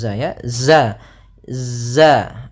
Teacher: Nah, dia ada sifat yang namanya sifat jahar dan dia sifat rokhawah. Ya, za itu rokhawah, artinya suaranya mengalir tapi nafasnya tertahan